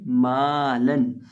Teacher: यहाँ हम मीम को एक अलिफ के बराबर लंबा करके पढ़ेंगे। अब अगर जज़म की अलामत होती तो फिर हमने पढ़ना था मा, फिर माँ नहीं पढ़ना था।